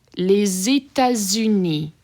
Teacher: you have a liaison happening here between les and états, and also between état and uni